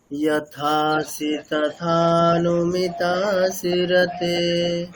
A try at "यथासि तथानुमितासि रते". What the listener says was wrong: মিটা দীর্ঘ হবে না, দেখুন মিটার হ্রস্ব আছে।